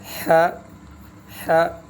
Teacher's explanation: یہ جو حلق ہے، جو گلا ہے، گلا کے درمیان سے، حلق کے درمیان سے ح جب ادا کریں گے تو ہوا کی سی آواز آئے گی درمیان سے، چونکہ خلا ہے، خلا سے جو ہے خالی جگہ سے یہ حرف درمیان سے، گلے کے بالکل درمیان سے ادا ہو رہا ہے، اس لیے اس کے ادائیگی کے وقت ایک ہوا، اس میں ہوا کی سی آواز آئے گی۔